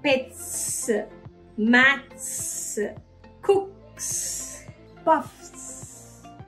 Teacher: S always makes the S sound after it is placed after a consonant that has an unvoiced sound, meaning it doesn't have a sound from here, but it comes from the tongue and the lips and the air that comes out.